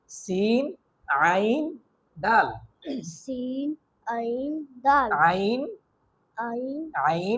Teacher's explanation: আইন একটু ভিতর থেকে, অর্থাৎ আমাদের যে কণ্ঠনালী আছে, আমাদের যে হলক আছে, কণ্ঠনালীর মাঝ থেকে আমাদের এই উচ্চারণটা করতে হবে